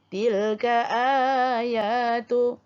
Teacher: Huruf alif tu asal dia huruf hamzah. Digantikan huruf hamzah itu kepada huruf mad, iaitu dipanjangkan 2 harkat. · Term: mad badal